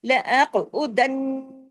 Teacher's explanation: اغویتنی لأقعدن، قاف ہیوی بھی کرنا ہے، قاف پہ کلکلا بھی کرنا ہے۔ لأقعدن، دن نون پہ تشدید ہے، ڈبل نون ہے، بڑا غنہ ہوگا اکمل